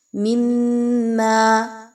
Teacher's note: میم کو میم سے ملائیں گے، میم مشدد ہے، غنہ کرتے ہوئے پڑھیں گے